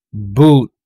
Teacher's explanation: So very rounded yung ating lips, very, very rounded.